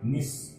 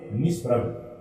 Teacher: और ये देखिए ये उपसर्ग है निस, और इसके सामने पै आ गया, इस कारण ये स है वो किस में बदल गया, ये दंत्य स है, ये आपके मूर्धन्य श में बदल गया